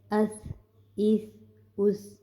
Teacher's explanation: زبان کو ہم نے سامنے والے دانتوں کی نوک کے ساتھ لگانا ہے، اور اس میں سیٹی کی آواز بالکل بھی نہیں آنی چاہیے